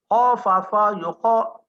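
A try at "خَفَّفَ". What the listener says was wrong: ada sabdu jangan buang.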